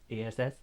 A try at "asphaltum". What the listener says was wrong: No, ASPH. Asphaltum. Or you can do it the German way and say Asphaltum.